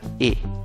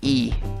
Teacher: Pero en cambio, mira, esta palabra tiene 2 Is. La primera chiquita que se duerme y la última larga y con fuerza